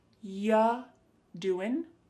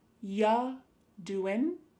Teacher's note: When we say you doing anything fun, instead you're going to hear ya doing. Ya, the word you is reduced to ya.